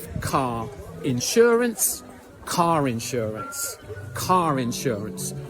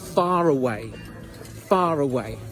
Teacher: If a word finishes with an or an r sound, and the next word begins with a vowel sound, we link those words with a r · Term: Vowel to vowel linking